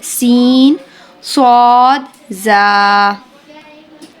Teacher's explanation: सीन, स्वाद एंड ज़ा जो है ये हमारे ज़बान की नोक जब ऊपर के अगले 2 दांतों के दरमियान आ जाती है तो हमारे ये 3 हरूफ अदा होते हैं. ज़बान की नोक जब ऊपर के अगले 2 दांतों के दरमियान आ जाए तो हरूफ सफ़ीरा अदा होंगे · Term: सीटी वाले हरूफ